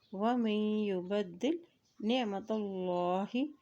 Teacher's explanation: اللہ کے نام سے پہلے زبر آ کے ہے تو اللہ کا نام یہاں پر موٹا ادا کیا جائے گا